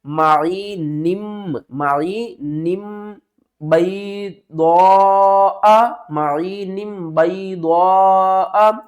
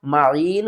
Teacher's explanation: کیونکہ آگے با آ رہا ہے، واصل کی صورت میں ہم کیا کریں گے، میم کو پڑھیں گے، واقف کی صورت میں میم کو نہیں پڑھیں گے